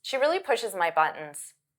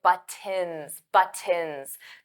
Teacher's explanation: For pronunciation, maybe the word buttons wasn't clear because native speakers, we don't pronounce those T's. I don't say buttons, buttons.